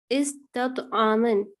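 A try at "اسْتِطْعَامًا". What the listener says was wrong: इस्तिफ़आमन, ये इस्तफ़आल नहीं है बल्कि इस्तिफ़आलन है मस्दर इसका, इस्तिफ़आलन,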